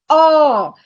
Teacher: It is unrounded, but it is long, and it's the vowel ah.